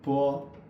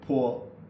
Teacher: we don't have a path of air and poor we have a very strong path of air